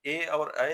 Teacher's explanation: ए और ऐ दोनों स्वर का उच्चारण कंठ तालव्य है।